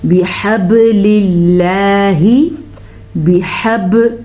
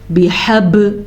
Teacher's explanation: با پہ قلقلہ ہو رہا ہے کیونکہ با حروف قلقلہ میں سے ہے۔ قاف، طغا، با، جیم، دال، یہ 4 حروف قلقلہ کے ہیں، جب بھی ان پہ ساکن آ جائے تو قلقلہ ہوتا ہے۔